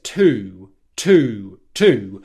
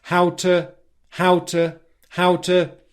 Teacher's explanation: the second time she says it she says it with more of a weak pronunciation and more of a schwa sound